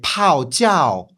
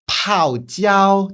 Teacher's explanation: so like two falling tones instead of a falling and then a high tone